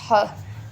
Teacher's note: ग्लॉटल sound जो कि हमारे गले में होती हैं, जिनको हम ह भी कहते हैं, ह, ठीक है।